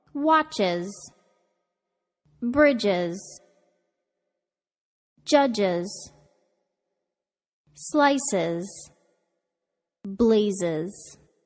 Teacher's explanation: cause the plural s to be pronounced with an additional syllable